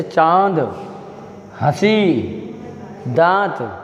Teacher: उच्चारण करते हैं तो हवा नाक व मुख दोनों से निकलती है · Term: अनुनासिक